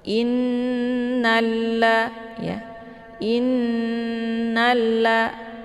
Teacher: Jadi ketika sama-sama huruf lam bertemu dengan lam di depannya, maka lam yang pertama yaitu yang sukun dileburkan ataupun dimasukkan ke dalam lam yang kedua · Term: lam sukun